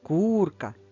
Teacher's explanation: куди поставимо наголос курка на перший склад